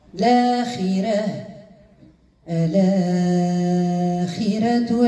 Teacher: الآخرة الراء مرققة لأنها مسبوقة بكسر لازم